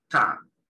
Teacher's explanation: El sonido de la N es una N que nosotros no tenemos, que es más gutural. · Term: N gutural